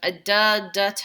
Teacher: There's a da, da, ta retroflexive in Hindi that we can't hear.